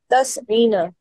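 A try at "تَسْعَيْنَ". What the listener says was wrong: नहीं, तस ईना नहीं है, मतलब आइन की हरकत का मसला है, बाकी चीजें तस आइना।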